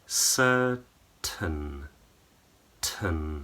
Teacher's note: So the jaws are relaxed, lips are completely relaxed. So there's hardly any shape in your lips. Tongue is in the very middle of the mouth. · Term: schwa